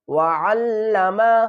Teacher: وعلم، عین کو ہم حل کے درمیان والے حصے سے نکالیں گے اور عین کو لام سے ملائیں گے، لام کے اوپر سختی کریں گے